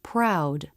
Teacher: tongue lifts to the roof of the mouth the word proud when R is in a beginning consonant cluster the lips may not be as tight as in a beginning r